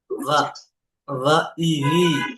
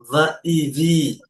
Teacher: মানে দুই ঠোঁট একত্র হবে না, উপরের দাঁতের আগা নিচের ঠোঁটের ভিজে অংশ। এই দেখেন, va va ই ভি।